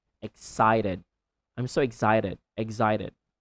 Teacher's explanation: In American accent, you can again replace the T to D, but very quick.